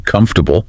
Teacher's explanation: That middle vowel sound takes a break.